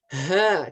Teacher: H dan huruf hamzah itu di sini, letaknya di tenggorokan paling bawah, paling dasar · huruf H ini huruf tenggorokan juga. Tenggorokan bagian bawah ya.